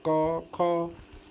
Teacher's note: ना जीभ ऊपर जाता है ना दांत से संपर्क होता है ना तुम्हारे कहीं ओठ से है डायरेक्ट यह मुंह से खुलता है क ख मुंह खुलता है और सीधे कंठ से आवाज आती है